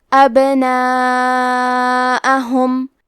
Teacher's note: یہاں با کا حکم ہے قلقلہ. قلقلہ کا معنی ہے حرف ساکن کو ہلانا، تو ہم حرف البا کو ہلاتے ہوئے یہ کلمہ کو پڑھیں گے